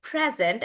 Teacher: So the present is either a gift or it's the present tense, and then we're using it as a noun, and that's why we say present, and the stress is on pre